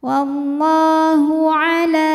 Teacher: karena lam barisnya fathah panjang maka lam panjang dua harakat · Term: Mad Thobi'i muqaddar